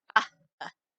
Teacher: The P, again, is pre-aspirated. So rather than appa, it's appa.